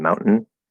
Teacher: we're using a glottal stop t and then we're not saying tane or tin or something like that we just say the n